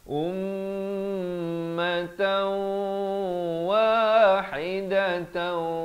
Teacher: Sekali lagi idgham bi ghunnah di sini masuk beserta dengung 2 harakat.